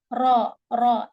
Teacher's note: زبان کے کنارے کی پشت جب اوپر والے 3 دانتوں کے مسوڑے سے لگے، اس سے را ادا ہوتا ہے